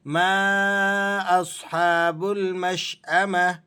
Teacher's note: ما اصحاب المشأمہ، ما یہاں مد ہے، اسے مد منفصل کہا جاتا ہے۔ مد منفصل جائز، اس کی مقدار 4 الف ہے، لیکن اگر آپ اسے کم بھی کھینچیں تو تب بھی جائز ہے